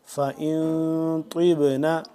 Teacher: نون ساکن کے اوپر ہم نے غنہ کرنا ہے، اخفا کرنا ہے